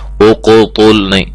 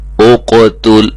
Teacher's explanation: قاف موٹا ہے، تا باریک ہے، یہ نہ ہو کہ ہم تیزی میں پڑھیں اور یہ بھی موٹا ہو جائے۔